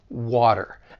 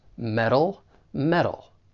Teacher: so the flap T it sounds more like a soft D